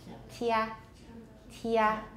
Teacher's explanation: It's basically a T sound. Basically make a T sound plus a y. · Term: palatal stops